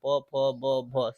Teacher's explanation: प बोलोगे तो बिना ओठ चिपके हुए बोला ही नहीं जाएगा प फ ब भ सब में ओठ सट है ठीक त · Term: प वर्ग, ओष्ठ